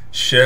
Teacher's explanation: شین کو 5 الف کی مقدار کھینچنا ہے، اس لیے کہ شین کے بعد حروف مدہ بھی ہے اور حروف مدہ کے اوپر ایک بڑا سا مد بھی ہے۔